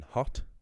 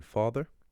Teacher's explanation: And yes, so if you compare the vowel in hot versus the vowel in father, they're the same quality of vowel, they just differ by length. So vowels can differ by length in duration.